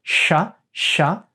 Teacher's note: Then we have the sha, which comes from the tongue, the palatal, the tongue going to the palate.